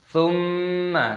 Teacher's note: Bedakan antara berdengung gunnah dengan pendek, jangan sama-sama didengungkan dan dipanjangkan, karena mim di sini itu pendek